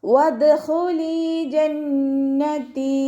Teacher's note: വാവ് ഉച്ചരിക്കുമ്പോൾ ചുണ്ടുകൾ ഒന്ന് സർക്കിൾ ചെയ്ത് കൊടുക്കുക. ദാല് കൽക്കലയുടെ ലെറ്റർ ആയതുകൊണ്ട് ഫുൾ സുക്കൂന് കൊടുക്കാൻ ശ്രദ്ധിക്കുക.